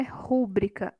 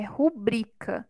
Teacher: A gente até ouve, né, falar rúbrica, mas não é rúbrica, é rubrica. A sílaba tônica é a penúltima, é uma palavra paroxítona.